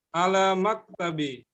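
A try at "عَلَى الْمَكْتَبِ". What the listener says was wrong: Alif lamnya dibaca, samsiah komariahnya. Alal maktabi. Alif lam komariah.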